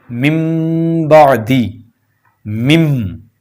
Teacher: پہلا لفظ ہے من بعدی، مم، یہ جو میم کو آگے ہم میم کس سے ملا رہے ہیں تو یہاں پر نون کی آواز ختم ہو جائے گی، میم کی آواز بن جائے گی مم، یہ ہے اقلاب، من بعدی۔ · جو چھوٹا سا میم لگا ہوتا ہے وہ اسی لیے ہوتا ہے، وہ آسانی کے لیے ہوتا ہے تاکہ عام قاری اس کو سمجھ لے کہ یہاں پر میم کی آواز پیدا ہوگی، تو لہٰذا وہاں پر نون ساکن اور تنوین کو میم سے بدل دیں گے اور غنہ کر کے پڑھیں گے، یعنی ناک میں آواز اس کی چلی جائے گی